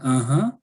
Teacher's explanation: it goes up shows you're interested really that shows surprise or you're happy so yeah Rising intonation